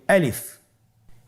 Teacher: আলিফ হরফটি মাখরাজ হলো আপনার মুখের শূন্যস্থান থেকে, গলা এবং মুখের শূন্যস্থান হতে আলিফ হরফটি উচ্চারিত হয়